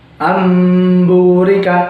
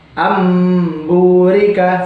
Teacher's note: Jadi tulisan aslinya itu anburika, tapi dibaca amburika seperti itu. Lalu di kata lain ada yambu'a. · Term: iqlab